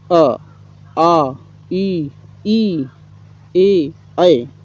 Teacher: होठ ओष वृत्ताकार ना होकर फैले रहते हैं उन्हें आ वृत्ताकार स्वर अथवा आवृत मुखी कहते हैं